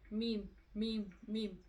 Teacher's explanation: तो जब हम बा पढ़ेंगे तो ब ब ब, ये अंदर के जो होंठ होंगे वो आपस में मिलेंगे, ब ब। और जब मीम पढ़ेंगे तो ये बाहर के होंठ है वो आपस में मिलेंगे